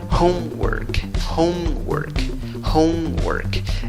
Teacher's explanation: La fuerza de voz va en la primera sílaba contando de izquierda a derecha. · Y en la segunda sílaba, aunque se escribe con O, la pronunciación no es con O. La pronunciación es con schwa, la que no es ni A, ni E, ni O.